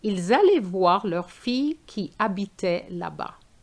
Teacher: you do a link between an S and an A, which is the liaison